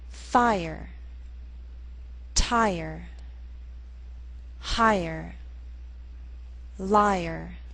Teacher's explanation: in these words be sure to make the r sound a separate syllable